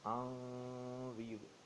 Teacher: نون ساکن ہے اور اس کے بعد حروف حلقی نہیں ہے، اس لیے اس پہ اخفا کرنا پڑے گا